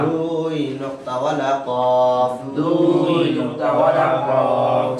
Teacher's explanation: জিহ্বার গোড়া, তার বরাবর উপরে তালুর সঙ্গে লাগাইয়া